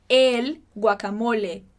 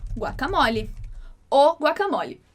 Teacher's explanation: o O do espanhol, independentemente de qualquer posição que ele estiver na palavra, sempre vai ter o som fechado